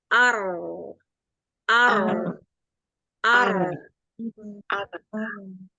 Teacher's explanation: kalau huruf ro itu yang mengalir justru dari ujung lidah, ya. Ujung lidah itulah yang membuat celah kecil.